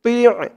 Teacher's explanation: মুখটা একটু ভরপুর থাকবে তোর উচ্চারণটা করার সময়।